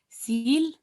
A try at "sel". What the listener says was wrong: Sel, not seal. Sel,